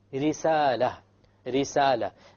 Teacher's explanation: when there is a Kasra, the Ra will be light.